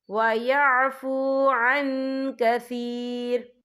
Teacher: یا دیکھیں وَيَعْفُو عَن، یہاں نون ساکن ہے، نون ساکن کے بعد جو ہے کاف آ رہا ہے، اور کاف جو ہے اخفا کا ورڈ ہے، تو ہم یہاں اخفا کریں گے، نون ساکن کی آواز کو ناک میں چھپائیں گے